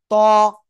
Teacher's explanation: জিহ্বার আগা উপরে দুই দাঁতের গোড়ায় লাগান, লাগান, লাগান, লাগিয়ে মোট আওয়াজে পড়তে হবে